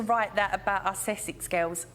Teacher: You can hear Gemma Collins there using that vocalised dark L on girls and also that glottal T on about